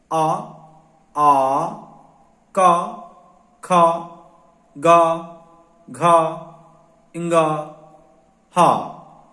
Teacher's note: ये कंठ से उच्चारण होने वाले व्यंजन और स्वर हैं।